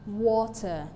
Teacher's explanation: So we have two syllables in water, wa and ter. So the stressed syllable is in WA, while the unstressed syllable is TER.